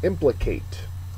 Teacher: First syllable is accented.